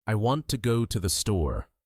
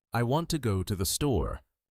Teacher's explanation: Notice how want and store are stressed